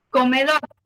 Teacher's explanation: comedor tiene su sílaba tónica en la última sílaba y termina en una r es una palabra aguda porque su